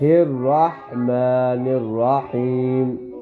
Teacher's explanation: آخری جو دو ہاں ہیں وہ گلے کے درمیان سے ادا ہوں گے